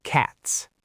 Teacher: Cats. The whole ending of the word is unvoiced. Short vowel, sharp t, sharp s,